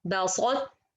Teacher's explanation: It's not idgham kamil. It's ناقص because I still have the طباق from ta. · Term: incomplete idgham